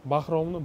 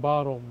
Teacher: bir qismida h tovushi umuman yo'qolib ketgan.